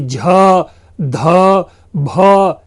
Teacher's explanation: यानी झ ध भ, जिस वर्ण में अधिकांश, प्राण का अर्थ होता है सांस, तो अधिक हमें सांस छोड़ना पड़ता है, ऐसे वर्णों को महाप्राण कहते हैं